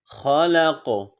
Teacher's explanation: قاف ساکن آ گیا اس لیے وقف میں اس پر قلقلہ کیا جائے گا